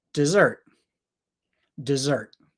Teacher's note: I wrote zert bigger big letters because that is the stress part of the word that we focus on we don't focus on this part this part's lazy d d